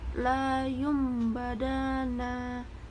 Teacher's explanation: Cara bacanya dengan menyuarakan na atau tanwin menjadi suara mim dengan merapatkan dua bibir saat mendengung mim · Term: iklab